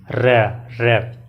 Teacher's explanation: जब हम बोलते हैं र, इसमें देखो तो जो हमारी जीवा होती है वो थोड़ी सी टर्न हो जाती है, एकदम घूम जाती है गोल सी, र। ठीक है, र घूमती है और लुढ़कती हुई महसूस होती है, थोड़ा सा क्या बोलें उसको, बेलनाकार टाइप में, या थोड़ा सा मुड़ जाती है, इसीलिए इसको लुंठित कहा जाता है। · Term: लुंठित व्यंजन